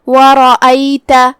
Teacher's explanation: کلمت ورأيت، جو کہ یہاں را پہ زبر ہے، را کا حکم ہے تفخیم، مطلب ہم را کو بھاری آواز میں پڑھیں گے · یہاں ہم حمزہ کو حلق کے نیچے والے حصے سے ادا کریں گے اور اسے ظاہر کریں گے. دھیان رہے اس پہ زبر ہے تو ہم اسے زبر سے ادا کریں گے.